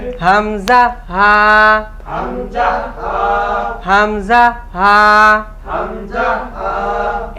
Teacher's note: এক নাম্বার মাখরাজ হলকের শুরু হইতে